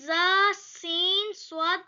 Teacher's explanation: ان 3 حروف یعنی ز، سین، صاد کو ادا کرتے وقت سیٹی کی طرح تیز آواز نکلتی ہے، اس لیے ان حروف کو حروف صفیریہ یعنی سیٹی والے حروف کہتے ہیں۔